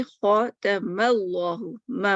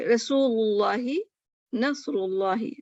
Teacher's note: اچھا, تفخیم, لفظ جلالہ اللہ سے پہلے زبر یا پیش ہو تو اس کو موٹا پڑا جاتا ہے